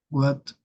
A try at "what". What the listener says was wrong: Remember, guys, the sound right here, clock. Tenemos la O, no la A, right? Clock. So right here is no what, is what, want, watch. I know that all of our life we have been used to say what, want, watch, but that is not correct, okay?